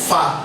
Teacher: Consonant sound like fa is produced. The flow of air is specially obstructed by the lower lips and the upper teeth. The obstruction in this case is a partial obstruction.